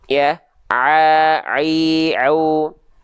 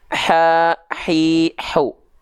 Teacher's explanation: kalau Ain dia enggak pakai nafas kalau H kecil dia pakai nafas